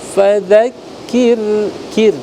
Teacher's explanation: ra tipis karena huruf sebelumnya kaf itu berharokat kasrah